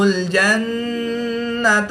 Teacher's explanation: نون مشدد میں ہمیشہ غنہ ہوتا ہے تو یہاں پر ہم غنہ آنی کر کے پڑھیں گے